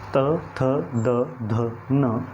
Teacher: हमारी जीभ जो है वो हमारे नीचे के दांतों से टकराती है, इसलिए त वर्ग का उच्चारण स्थान हो जाता है दंत्य या दंत।